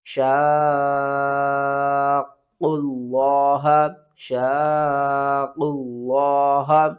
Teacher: قاف کو آپ نے موٹا کر کے بھی پڑھنا ہے، قاف کے اوپر قلقلہ بھی کرنا ہے